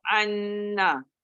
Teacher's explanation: Saya betulkan ain tu kepada hamzah, ubah kepada hamzah bukan ain.